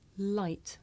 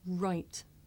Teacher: and watch the position of my mouth light right light right I make the sound with the front part of my tongue behind my teeth and I make the rough sound by making my lips come out and pulling my tongue back